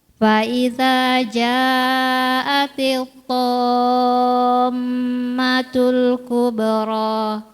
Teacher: Ada mim bertasydid, gunahnya disebutkan.